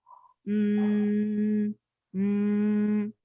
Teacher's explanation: the sound uses the vocal cords and it produces this humming sound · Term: voiced sound